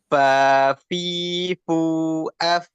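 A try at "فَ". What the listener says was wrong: Hmm, coba makronya di mana? Huruf fa, ujung gigi ujung gigi seri atas sama bibir bawah bagian dalam ya, ini kurang hamas ini. Nah, ada dorongan udara dulu.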